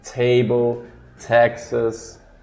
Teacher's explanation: uma stop consonant, vocês têm que parar o ar.